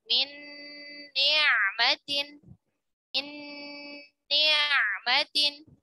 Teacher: Peleburan huruf pertama ke huruf keduanya sempurna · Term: idgham mutamathilan shaghir